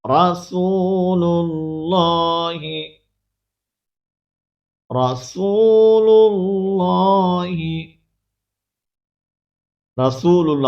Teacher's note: جب لفظ اللہ کی لام سے پہلے زبر یا پیش موجود ہو تو لفظ اللہ کی لام کو پر کیا جاتا ہے، اور جب اس سے پہلے زیر موجود ہو لفظ اللہ کی لام سے پہلے تو پھر بریک کیا جاتا ہے.